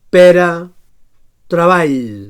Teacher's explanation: Recordem que, tot i que el mode d'articulació stricto sensu seria ròtic, amb dos submodes, bategant i vibrant, preferim simplificar presentant dos modes d'articulació independents, el bategant i el vibrant. So alveolar bategant sonor